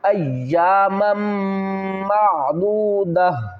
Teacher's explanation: اس تا کو دو زبر کو ڈراپ کریں گے، ہا کو ساکن پڑھیں گے